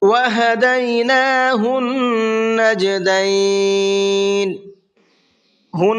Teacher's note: یہاں نون کے اوپر تشدید ہے، اس لیے اس میں غنہ کر کے پڑھیں گے۔